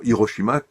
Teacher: Nous disons Hiroshima comme si le H n'existait pas. Or, il s'agit, paraît-il, d'un H aspiré, donc la prononciation japonaise est très différente.